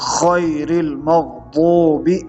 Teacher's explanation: عربی اور اردو کے تلفظ میں صرف یہ فرق ہے کہ غین کو پڑھتے ہوئے آپ کی آواز موٹی ہوگی